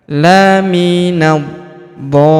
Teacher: Kemudian huruf d kita panjangkan enam harakat. Karena di atas huruf d terdapat tanda garis bacaan panjang empat atau lima harakat bertemu dengan huruf berharakat tasydid.